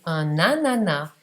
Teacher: AN più vocale A, non è più una nasale